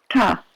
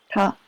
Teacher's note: All right, the group that we're looking at tonight are the cerebral or the retroflex consonants. And those are the ones where you take the tip of your tongue and turn it up and put it against the top of your palate, the top of your mouth.